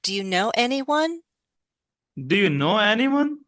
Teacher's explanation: Our voice is going up, but the stress is still on any.